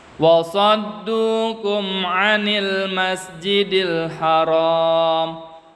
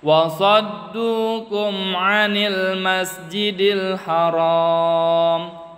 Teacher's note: Izhar itu jadi emnya nggak boleh tahan, kita harus membacanya secara cepat, nggak boleh ditahan.